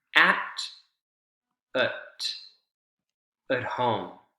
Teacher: the t uh is reduced more to a d right d consonant sound